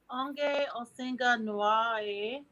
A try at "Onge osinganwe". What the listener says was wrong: No, you don't worry about the A for the question. Here, just onge osinganwe.